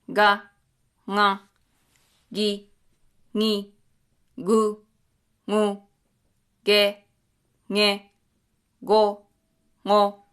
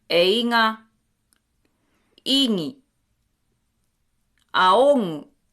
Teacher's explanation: If the gu, sound is between two vowels, it gets nasalized.